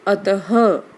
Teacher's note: विसर्ग का उच्चारण किस रूप में हुआ है, ह के रूप में।